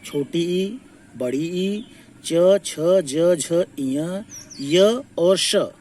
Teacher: इनका उच्चारण स्थान हो गया तालु